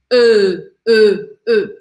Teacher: Mas ele é intermediário entre os dois, e a gente fala E. Para você fazer esse som, você faz a boca de um O e coloca a língua atrás dos dentes, de baixo. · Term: som do E em francês